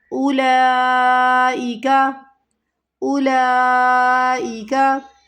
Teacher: مد والے حرف کے اندر حمزہ جو ہے اپنی اصلی حالت میں ہے تو یہ مد متصل، اسے ہمیں کھینچنا ہے 5 الف کی مقدار کے برابر۔ کاف متحرک، کاف کو نہیں کھینچنا۔